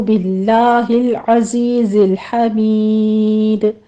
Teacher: باللہ العزیز الحمید میں لام لفظ جلالہ جو ہے اس کو باریک پڑھا جائے گا، آگے دونوں لام ساکن ہیں ان کو سٹاپ کرنا ہے، زائی کی آواز سیٹی کے ادا کرتے ہوئے آگے یا مدہ.